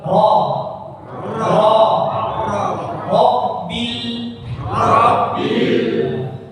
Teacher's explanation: Ya, ro-nya tebal. Ro ketika fathah dibaca tebal.